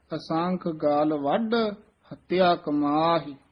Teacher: ਗਲ ਪੋਲਾ ਬੋਲਣਾ ਵੱਢ ਕਸ ਕੇ ਬੋਲਣਾ ਹੈ ਪਾਠ ਇਕੱਠਾ ਹੀ ਹੈ ਵਿਚ ਡੈਸ ਲਾ ਕੇ ਉਚਾਰਨ ਕਰਨਾ ਅਸੰਖ